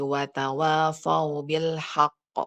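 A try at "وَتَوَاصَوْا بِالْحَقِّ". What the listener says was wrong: Jangan jangan seperti tadi itu rawan terbaca sin rawan sekali.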